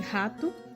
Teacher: sua realização se dá pela passagem do ar através de um estreitamento na boca nesse caso a língua não toca o palato · a língua não toca o palato e a fonação pode ser desvozeada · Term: r fricativo velar, R fricativo velar